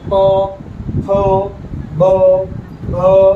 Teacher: આ અક્ષરો છે ને એને આપણે હોઠની જરૂર પડે. જો પ, ફ, બ, ભ આ બોલતા વખતે આપણે બે હોઠ ભેગા કરવા પડે છે, એટલે આપણે એને કોષ્ટય કહીએ છીએ.